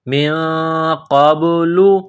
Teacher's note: کو موٹا کرنا ہے، قاف کو با کے ساتھ ملانا ہے، با ساکن ہے، قلقلہ کریں گے · نون ساکن پر غنہ کریں گے، آواز ناک میں چھپائیں گے